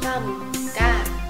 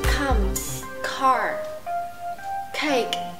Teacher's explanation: Các bạn hãy đẩy hơi nhiều hơn một chút thành come, car, cake. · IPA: /k/